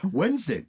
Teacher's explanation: You don't pronounce the D in Wednesday, and yet there is one. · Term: silent D